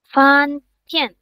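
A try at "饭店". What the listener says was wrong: Huruf Ian kemarin kita udah belajarin kalau Ian dibaca Yen. Fan Tian gitu. Fan Tian karena huruf D dibaca T, huruf Ian dibaca Yen, jadi Fan Tian.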